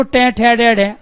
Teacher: जब टे ठे डे डे का उच्चारण करते हैं तो जीभ क्या करती है? मूर्धन्य को स्पर्श करती है।